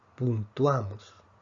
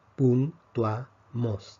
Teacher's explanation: Vemos que aquí tenemos un diptongo, puntuamos. Tenemos vocal cerrada con vocal abierta. La fuerza cae sobre la vocal abierta.